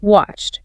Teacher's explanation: after a voiceless sound like a k sound in watch, the ed sounds like a t